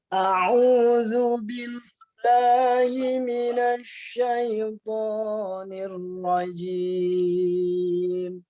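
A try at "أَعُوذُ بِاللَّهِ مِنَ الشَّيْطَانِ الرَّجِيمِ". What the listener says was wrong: Coba sengaunya dihilangkan, ya. A'udzu billahi minasy syai, bukan syai.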